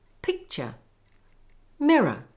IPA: ˈpɪk-tʃə ˈmɪr-ə